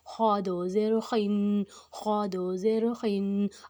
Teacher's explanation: اب جو خا ہے وہ موٹا حروف ہے، اس میں منہ کو گول نہیں کرنا، اس کو موٹا کر کے ادا کریں ، اندر سے موٹا کر کے ادا کریں، یہ ادا ہو